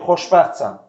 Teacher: Sonra dilimizdə FT, XT, ST, ŞT birləşmələri var. Bu birləşmələrdə uşaqlar T hərfi tələffüz olunmur.